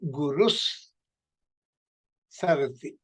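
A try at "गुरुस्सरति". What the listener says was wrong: You make sure that you're saying it without viramaha. You should say it together. And a full sa.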